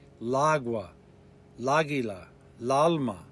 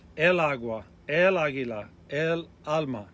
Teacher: the article and noun would slur together and sound like one word